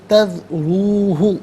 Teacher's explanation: را پر پیش ہے، را کو پر کر کے پڑھیں گے، واو مدہ ہے، ایک الف کی مقدار کھینچ کر پڑھا جائے گا۔